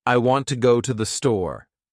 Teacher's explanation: the words want, go, and store have more stress because they carry meaning